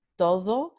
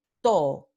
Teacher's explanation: Muchos hablantes usan la aproximante the, todo, pero muchos otros hablantes tienen elisión como una característica de su dialecto. Entonces tenemos to.